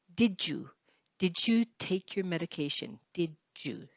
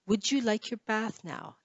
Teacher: In this case, the D and the Y makes a J sound. · The D and then the Y sounds like a J.